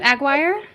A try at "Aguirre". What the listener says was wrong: No, Aguirre. Because you got to roll the R. Aguirre.